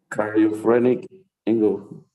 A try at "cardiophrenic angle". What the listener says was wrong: Okay, perfect. You are good at pronunciation. You are improving.